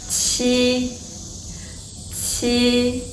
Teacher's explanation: The Chinese pinyin qi, the pronunciation is more forward and the tongue body is closer to hard palate.